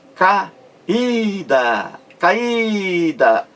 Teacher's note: A sílaba mais forte é o I. Esse I aí forma um hiato em relação à vogal anterior, A. A e I são duas vogais em sílabas diferentes.